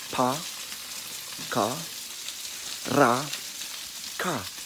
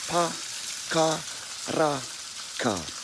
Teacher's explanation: in terms of the vowels and how you pronounce those, they're all short. There's no stressed vowels. There's no vowel that sounds like an A, as in like apple, as an apple.